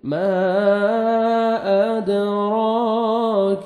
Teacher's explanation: थुम्मा मा मद्दे जायज़ है, हरूफ मद्दा के बाद नेक्स्ट कलिमा के स्टार्टिंग में हमजा आ रहा है, 3 से 4 सेकंड एक्स्ट्रा मद करेंगे। मा अदराक दाल हरूफ क़लक़ला में से डबल साउंड आएगा, क़लक़ला करेंगे, रॉ को मनखड़ा ज़बर है, रॉ को मोटा करना है, 1 सेकंड खींचेंगे, काफ को बारीक पढ़ेंगे।